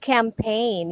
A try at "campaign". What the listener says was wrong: It's not campaigned. It's because of the G, right? So it's a silent G.